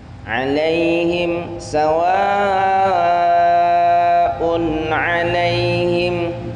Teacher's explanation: di sana ada tanwin bertemu dengan ain, maka harus dibaca jelas karena hukumnya izhar